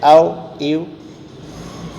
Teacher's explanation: واو دونوں ہونٹوں کے ادھورے ملنے سے ادا ہوتا ہے